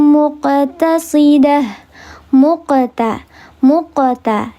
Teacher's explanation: Ini adalah qalqalah sugra. Maka dibacanya dia diledakkan atau dipantulkan. Tapi pantulannya natural saja karena di tengah kalimat